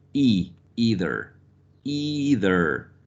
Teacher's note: So in BBC English or received pronunciation, we have the diphthong, I. But in General American, we have only a monophthong, either, either, with the corresponding rhoticity here, right?